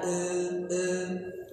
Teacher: Takqlil ini antara fathah dengan imalah. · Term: taklil